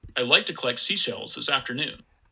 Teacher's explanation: i get up to about 213 hertz so not nearly as high as the female speaker did